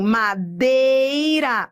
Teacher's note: Madeira é ditongo, só que eu tô indo do forte pro fraco, decrescente.